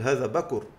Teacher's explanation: نسكن الراء وننقل حركتها للكاف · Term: النقل